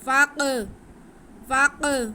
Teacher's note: फ़क़्तुलू अनफुसाकुम, फ़ा पे ज़बर है और काफ साकिन है, फ़ा का ज़बर हम काफ के साथ मिलाएंगे, अलिफ को नहीं पढ़ेंगे, और काफ हरूफ कलकला में से है और साकिन है, तो इसको हम जुम्बश दे के पढ़ेंगे।